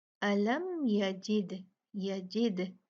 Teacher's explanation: यजिद दाल पे कलकला होगा क्योंकि दाल जो है वो कुतुबुजदिन लेटर्स में से है, और यहाँ पर तो है ही साकिन, तो हम इस पे कलकला करेंगे, इसको हिला के पढ़ेंगे